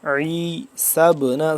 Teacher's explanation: عین کو حلق کے درمیانی حصے سے ذرا کھینچ کے